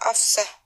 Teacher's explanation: Bunyi F dan S adalah dua bunyi yang memiliki kemiripan. Bunyi F dan S sama merupakan bunyi geser atau bunyi yang dihasilkan oleh udara yang melalui celah sempit.